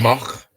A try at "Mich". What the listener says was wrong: No, it's an I, not an O.